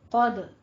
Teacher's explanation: قوف کو پر پڑھنا ہے، حروف مستعلیہ میں سے ہے، دال پہ قلقلہ کرنا ہے۔